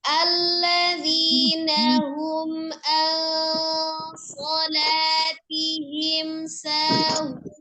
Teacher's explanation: Izhar safawi jelas di mim sa. Mimnya dibaca dengan sempurna tapi tidak ditahan.